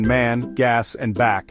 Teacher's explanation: Ae as in trap is short low front heard in man gas and back. This vowel is pronounced with the mouth open wider than for/ e slash.